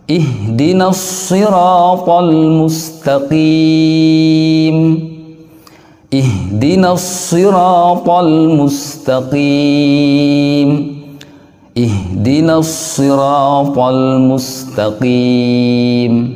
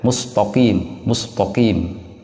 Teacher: huruf ta itu mempunyai sifat istifal, tipis, kemudian qaf itu mempunyai sifat al-isti'ala yang artinya tebal, karena terangkatnya pangkal lidah ke langit-langit